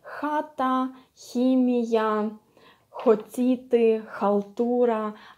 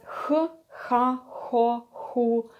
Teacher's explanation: So basically here what you can see, it's really H, it's really H. H sound when you don't use your voice at all, you just exhale your air and that's it.